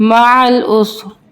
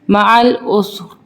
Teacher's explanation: وقف کی صورت میں ہم رو کو پر پڑھیں گے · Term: پر ساؤنڈ